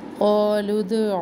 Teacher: आइन वस्ते हलक से